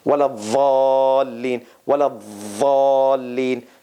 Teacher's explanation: Iraqis and some others, they pronounce it with a Z sound, with a hissing sound.